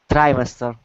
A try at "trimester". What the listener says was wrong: Right, not tree, but try. Trimester.